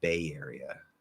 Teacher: you're actually going to link with a small y again